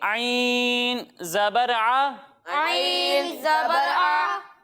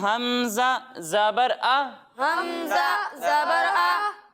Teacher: एक हर्फ आइन और दूसरा हर्फ हमज़ा। जब हम आइन की अदायगी करेंगे तो इसे हम हलक के दरमियाने हिस्से से पढ़ेंगे, और जब हम हमज़ा की अदायगी करेंगे तो इसे हम हलक के निचले हिस्से से पढ़ेंगे। यानी इसे पढ़ेंगे आइन ज़बर आ, आइन ज़बर आ, और इसे पढ़ेंगे हमज़ा ज़बर आ।